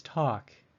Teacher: It is the vowel A, but its pronunciation is different. It sounds like a short O, or ah.